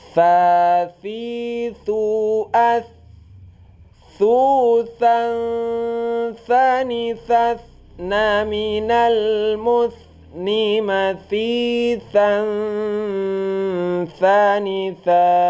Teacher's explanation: tha ini keluarnya di ujung lidah. Nah, ujung lidah dan di antara gigi-gigi · dia itu hamas, ya, keluar angin saat kita baca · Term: huruf tha